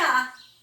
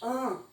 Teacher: quando o A está acompanhado de tio, ele nasaliza, não faz mais A, ele faz AN